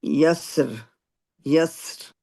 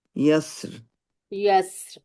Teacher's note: سین پہ ہمس ہوگی، یسر. یسر، اور سیٹی بھی ہوگی